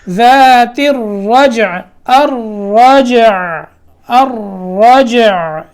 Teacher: یہاں جیم بھی ساکن ہے، لیکن جیم پہ کیا ہے؟ قلقلہ ہے